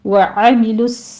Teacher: सौद के ऊपर भी तशदीद है, सीटी की आवाज़ के साथ पुर पढ़ा जाएगा और ऊपर फतहा कायमा है, हा पर भी फतहा कायमा है, हा को वस्ते हलक से अदा करना है और 2 काउंट कर लेने हैं।